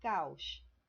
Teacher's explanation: duas vogais juntas mais em sílabas distintas vai separado · Dos vocales juntas, duas vogais juntas, pero em sílabas distintas, né? Duas vogais juntas, mas em sílabas distintas, em sílabas separadas. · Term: hiato